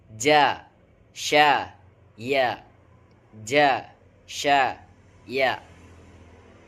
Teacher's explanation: bertemunya lidah bagian tengah dengan rongga atas. Hurufnya adalah jim, syim, dan ya. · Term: wasol lisan